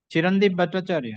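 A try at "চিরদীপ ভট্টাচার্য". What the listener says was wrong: Chirodeep Bhattacharya. My lord, Chirodeep. But there is no N.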